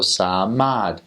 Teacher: But if you say one that's shorter, samad, it's not the same. You have to pronounce it the same length. They're long A sounding vowels.